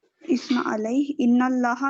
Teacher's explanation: اسم علیہ ان اللہ نون مشدہ ہو رہا ہے. لفظ الجلالہ اللہ کے نام سے پہلے فتحہ ہے تو موٹا پڑھیں گے